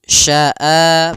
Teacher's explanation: ada mad badal adanya Hamzah bertemu dengan alif panjangnya dua harakat